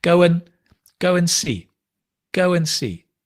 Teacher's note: Go and the D drops. So just to confuse you, we add a w and we drop the d.